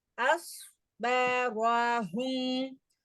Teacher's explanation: ரா வந்து இங்க ஹெவி, மேல ஃபத்ஹா வந்திருக்கு. அதனால அஸ்பரன்னு சொல்லக்கூடாது.